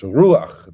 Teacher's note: the patach furtivum, which is an unaccented epenthetic vowel, and the idea of Paulkala was it's written not underneath the letter, but to a bit of the right of the letter. · The accent is on the U, and it's just a short A, and the A is written to the right of the chet, not straight underneath it.